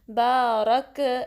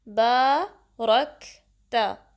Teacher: را کو کاف سے ملانا ہے اور کاف میں ہمس واضح کرنی ہے، ایئر فلو ہوگی، ٹھیک ہے، تاکہ کلکلا نہ ہو۔